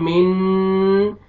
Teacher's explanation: یہ نون ساکن کے بعد حروف اخفا میں سے سین ہے یہاں پہ نوز میں ساؤنڈ لے کے جائیں گے اخفا کریں گے